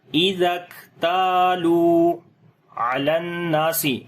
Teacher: لام کو ڈائریکٹ نون کے ساتھ ملائیں گے